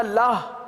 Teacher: اگر ہونٹ گول نہ ہوئے، آپ نے پڑھا لاہ، واو حذف ہو گیا، حرف واو ختم ہو گیا. تو واو کو باقی رکھنا ہے.